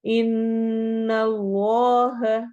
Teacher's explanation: ان اللہ، ان نون پہ غنہ ہو رہا ہے، اور اس میں جلالہ کو اگین یہاں پر ہم نے موٹا ہیوی کر کے پڑھنا ہے چونکہ نون کے اوپر فتحہ زبر آ رہی ہے